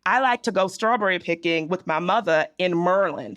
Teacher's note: So the dropping of the R is very important.